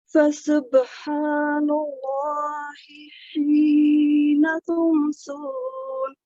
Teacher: ही को 2 सेकंड लंबा पढ़िए। हा मकसूर या के साथ है, प्लीज इसे 2 सेकंड दीजिए।